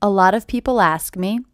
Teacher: this T is a flap T · the first thing I notice is this T is a flap